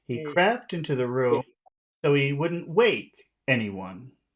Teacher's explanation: we'll put High tones on all of these words except the word anyone will make that low